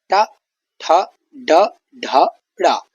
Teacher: जीभ की जो नोक है वो तालु के ऊपरी भाग से टकराती है, यानी तालु के हल्का नीचे, जो बीच का हिस्सा है उसके हल्का नीचे टकराती है। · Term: मूर्धन्य वर्ण